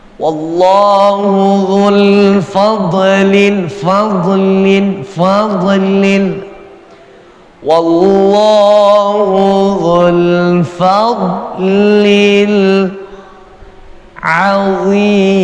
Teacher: Dhad sukun, bukan huruf qalqalah, sehingga enggak ada alasan kita buat memantulkan bacaan dhad yang sukun yang mati.